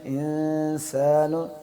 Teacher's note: انسان یہ اس طرح کر کے نا، انسان جو ہمارے ہونٹ ہیں اس کے نیچے جو نواجز جس کو ہم کہتے ہیں عربی میں، اس کے ساتھ دانتوں کے ساتھ زبان کو لگا کے تھوڑا سا سختی سے سیٹی کی طرف جائیں گے تو اس سے سین کی آواز آئے گی